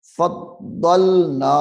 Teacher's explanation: یہ فضلنا کی جو الف ہے یہ مد اصلی ہے، یعنی اس کو ایک الف کے برابر کھینچ کر پڑھیں گے